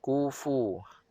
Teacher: perut bibir bawah sentuh hujung gigi kacip atas. Ada hembusan angin yang lemah keluar. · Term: fa